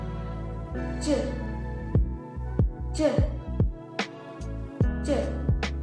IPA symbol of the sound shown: dʒ